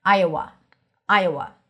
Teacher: when you transition from Iowa, it sounds like there is a yes sound there.